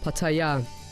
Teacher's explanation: the correct way to pronounce the name of the city is by stressing the last syllable